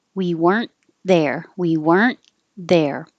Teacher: you won't hear the T if there's a consonant after it